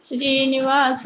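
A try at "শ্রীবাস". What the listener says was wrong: श्रीनिवास, माता जी श्रीनिवास नी नहीं है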